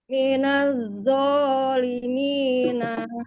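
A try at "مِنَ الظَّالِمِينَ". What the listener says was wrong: Nah, cuman ditebalkan, Bun, dan ujung lidahnya keluar ya, Bun. Minawulimina. Dikeluarkan, Bun, lidahnya. Minawu. Yang zo ya, Bun. Kalau zo itu berarti nggak ada apa ya, nggak ada. Sementara wo itu antara dal dan zal ya. Antara dal dan zal. Kalau wo ya.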